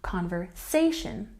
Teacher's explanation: we've got a stress here on the say sound